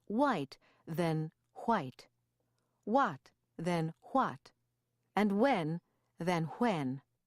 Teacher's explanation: although the h in wh is sometimes pronounced in standard American pronunciation it usually disappears